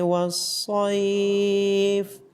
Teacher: صاد کو موٹا پڑا جائے گا۔